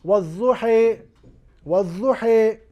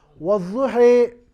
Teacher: امام ورش کے یہاں والضحی، تو یہاں پہ دیکھیے یا جو الف کی آواز، اس کو آپ نے یا کی طرف مائل کر کے پڑھا ہے. تو اس الف کو یا کی طرف مائل کرنا، فتحہ کو کسرہ کی جانب مائل کرنا، اسے اصطلاحی طور پر الامالہ کہا جاتا ہے